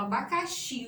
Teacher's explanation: Abacaxi, o xi, eu não falo a, eu não falo abá, eu falo abacaxi. O xi é que é mais forte aqui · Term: oxítona